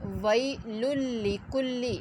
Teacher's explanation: ویل لکلی، لام کے نیچے زیر ہے یہ، اور ویل لکلی، لام میں بلا غنہ یعنی غنہ کے بغیر لام پڑھنا ہے